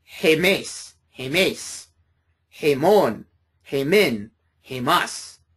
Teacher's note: notice the rough breathing over it. So you need to add the H sound in front of the ada, which is hemes, hemes, hemon, hemin, hemas.